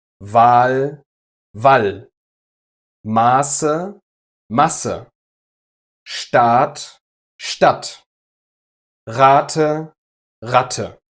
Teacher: vowel length is the only relevant factor here. The quality itself doesn't change.